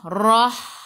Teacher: Hirrah, alif lam syamsiyah, lam tak ada sukun, selepasnya ada sabdu, terus tekan ke dalam ra. Ra baris atas kena baca tebal, tafkhim. Hirrah, biar ada getaran pada ra.